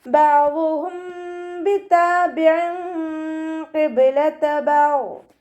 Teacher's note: ബഅ്ദുഹും ബിതാബിഇൻ ഖിബ്ലത ബഅദ് അണിൻ്റെ മഖ്റജ് ശ്രദ്ധിക്കുക കേട്ടോ. വസത്തുൽ ഹൽക്ക് തൊണ്ടയുടെ മധ്യഭാഗം സൗണ്ടിനെ ഹംസയുടെ സൗണ്ടായി പോവാതെ നോക്കുക. അയിനിന് കെസ്ര തെൻവീനാണ് വന്നിട്ടുള്ളത്.